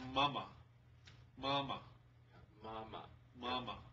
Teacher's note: the first one is the high flat tone, ma, and the second one is the neutral tone